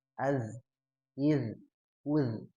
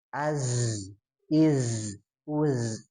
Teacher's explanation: Kalau zal mah dia nempel ujung lidahnya ke gigi. Kalau zai mah enggak ya, Za gitu ya, between gitu nya bahasa Inggrisnya mah.